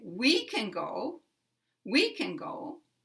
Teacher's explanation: putting very big stress on 'we'